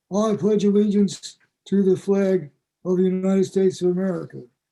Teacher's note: a short a in flag is raised from [ae] to [e:]